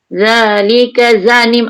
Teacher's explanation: za dal nipis, za nipis, ujung lidah keluar